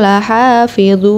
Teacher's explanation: di akhir ayat dibacanya panjang Mad Arid lissukun 5 harokat